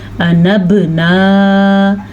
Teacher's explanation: با ساکن کی، با کے اوپر ساکن آنے کی وجہ سے قلقلہ کرنا ہے